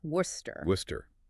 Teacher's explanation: The WR holds strong as the first syllable, wuss, and then the entire CESTER section is just brutally reduced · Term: reduction rule